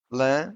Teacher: Lã, which means wool, has a nasal A.